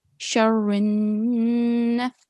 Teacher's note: we are joining the ra mushaddad, okay, ra mutaharrik, straight to the noon mushaddad.